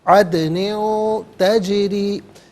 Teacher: अदनिन गलत, अदनिन तजरी, अदनिन में नून के नीचे दो ज़ेर की तनवीन है, तजरी में ता आ रहा है, यानी नून तनवीन के बाद ता आ रहा है, हरफ इख्फ़ा है तो यहाँ तनवीन पर इख्फ़ा किया जाएगा। नाक में आवाज़ ले जाकर गुनगुनाना, इससे इख्फ़ा कहते हैं। अदनिन तजरी, जीम साकिन है लेकिन यहाँ पर कलकला किया जाएगा, रॉ के नीचे ज़ेर है, रॉ को बारीक करके पढ़ेंगे।